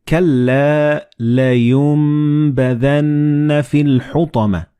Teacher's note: And this meme appears in the middle of the word. So the noon and ba, when they follow one another in the same word, you don't pronounce noon or ba, but you pronounce meme. Like in this example, you read كَلَّا لَيُنبَذَنَّ فِي الْحُطَمَةِ.